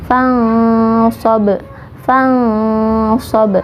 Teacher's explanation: huruf safir, ujung lidah sejajar dengan ujung gigi seri bawah. Contohnya nun sukun bertemu dengan huruf sod. · Kita menyamarkan nun, menyiapkan huruf so.